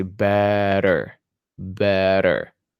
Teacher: And it's the technique when we take the regular T sound and we make it softer by placing our tongue a little bit further back in our mouth. And instead of saying better, we say better, better. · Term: flap T